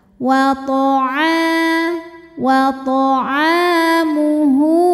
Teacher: ain ini panjangkan 2 harokat saja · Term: mad tabi'i zahiri